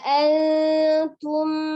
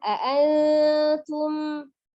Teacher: ada nun sukun bertemu dengan huruf ta, dibaca dengan ikfa samar mendekati huruf makhraj huruf ta